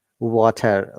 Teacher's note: Water, T becomes flap T. T, they say flap T, yeah? Which sounds like D.